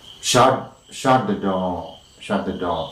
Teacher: shut the door, and the intonation mark is on door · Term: falling tune